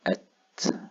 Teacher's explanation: فالتاء دائما مرققة وليست مفخمة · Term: تاء مرققة